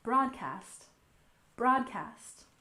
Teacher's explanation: next we have broadcast we stress the first syllable